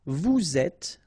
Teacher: little liaison between the two, and then final S not pronounced.